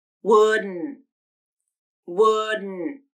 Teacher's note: I just pronounced wouldn't with nasal plosion and a stop T at the end.